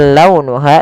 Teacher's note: lembutkan pelafalannya dalam launuha karena ada huruf waw yang sukun didahului dengan fathah